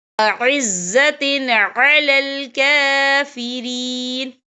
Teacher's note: کاف کے اوپر کھڑی حرکات ہے، تو ہم یہاں 2 یا 3 حرکت کے برابر کھینچیں گے